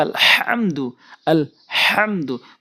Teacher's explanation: কারণ সূরা ফাতিহার ওখানে আমি যেটি উদাহরণ দিয়ে থাকি আলহামদু পরে অনেক দেখেছি আলহামদু পরে বলতে হবে আলহামদু আলহামদু। তো এখানে বড় হা হলকের মাঝখান থেকে উচ্চারণ করতে হয়, মাঝখান থেকে হা।